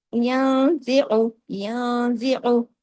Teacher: اب نون ساکن کے پاس زا ہے تو یہاں اخفا ہوا اور چھوٹا غنہ ہوا